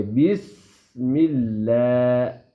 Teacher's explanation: سین کی آواز سیٹی کی طرح آئے گی